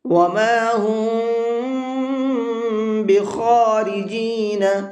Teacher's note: خا کو پر کر کے پڑھیں گے